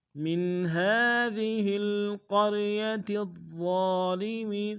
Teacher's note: ضا کو موٹا ادا کریں گے، ضا کے اوپر تشدید زور دیں گے، ضا کے ساتھ الف مدہ ایک دال میں کھینچیں گے۔